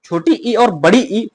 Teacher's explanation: तालु से इनका उच्चारण होता है। यानी कि जीभ का मध्य भाग तालु का स्पर्श करता है। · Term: तालव्य स्वर